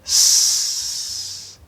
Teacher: So if we put S into a range, on one side we have the fully enunciated, very clear, perfect S sound in English. So there's a lot of force, lots of good air. There's a whistle sound because of the position.